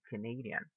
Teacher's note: the stress goes in the second syllable